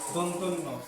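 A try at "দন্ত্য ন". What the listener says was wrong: দন্ত না দন্ত নিয়ে একটু পজ দিয়ে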